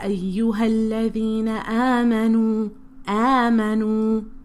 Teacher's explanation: we end up making the whole word nasally